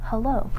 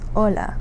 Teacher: So again you don't pronounce the H at the beginning of the word.